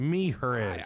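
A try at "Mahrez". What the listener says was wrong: I'd say Maris. I don't think you pronounce the H. Jamal Maris.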